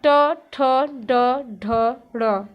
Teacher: टा वर्ग का उच्चारण स्थान हमारा मूर्धा है